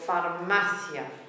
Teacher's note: The last syllable is ia. The beat goes on the last but one syllable